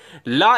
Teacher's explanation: है पार्श्विक जब भी हम कोई भी वर्ड बोलते हैं तो हमारी जो जीभ होती है उसके साइड से क्या होता है उसके साइड से रोल बनके हवा निकलती है